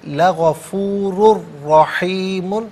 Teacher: رحیم میں را پر زبر، اسے بھی پر کر کے پڑھا جائے گا۔ غفور میں را پر جو 2 پیش کی تنوین ہے اسے رحیم کی را کے ساتھ ملائیں گے، را کی آواز کو ادا کیا جائے گا۔ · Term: یرملون کا جو قاعدہ